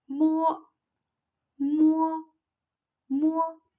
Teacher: a closure and the soft palate and the uvala are lowered the airstream passes through the nasal cavity with the vibration of vocal cords · It's an unaspirated bilabial nasal. The lips form a closure, and the soft palate and uvula are lowered.